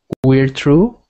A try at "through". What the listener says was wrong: Not true. Not true. Right now, you sound like you're saying this. It sounds like you're saying true. You want it to sound like the same word, but change the T to a TH, like this. Through.